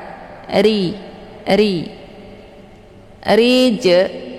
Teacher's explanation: bacaan ro ini ditipiskan atau bacaan tarqi karena rnya berharakat kisrah cara bacanya posisi pangkal lidah tidak terangkat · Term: tarqiq